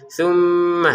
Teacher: Nah, ini tumma di sini kita ada mim bertasdid maka kita dengungkan ya. Tummah itu pusatnya ada di rongga hidung.